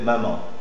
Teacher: C'est une consonne nasale, bilabiale et sonore.